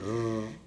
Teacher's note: And then there is only one rhotic sound, okay, which is giving the sound r. Okay, that is post alveolar rhotic, which is also a voiced one